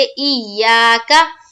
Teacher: کاف کے اوپر زبر کی حرکت ہے، زبر کو جلدی پڑھیں، تھوڑا بھی نہ کھینچے، جیسے ای یا کا۔